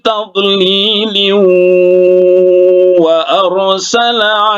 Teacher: Nah, ini tadi kalau berarti di sini fi tadlil, tapi kalau diwasolkan menjadi idgham bi guna karena tanwin, ya, tanwin bertemu dengan huruf waw. Waw ini salah satu idgham bi guna, ya, idgham bi guna. Jadi didengungkan sedikit.